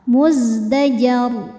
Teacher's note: Ketika berhenti di ro, rnya disukunkan dan dibacanya tafkhim. Kenapa? Karena sebelum ro disukunkan ada huruf berharakat di atas yaitu fathah.